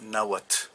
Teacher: en muchos dialectos actuales no se pronuncia la TL sino nada más t una t es como una t y una H al final